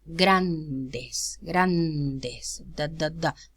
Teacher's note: There is contact. It's realized as an occlusive because it's preceded by the nasal.